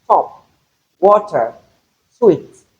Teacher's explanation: the voiceless alveolar plosive sound